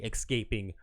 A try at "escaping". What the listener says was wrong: Did you say escaping? Escaping. There's no X.